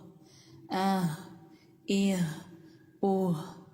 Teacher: جب ہا ساکن ہوتا ہے تو آواز گلے کے بالکل نچلے حصے سے سینے کی طرف سے ادا ہوتی ہے